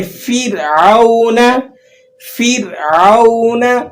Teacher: را ساکن اور فا کے نیچے زیر ہے تو آپ نے را کو باریک کر کے ادا کرنا ہے